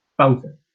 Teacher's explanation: la vocal que tiene el acento sería la primera A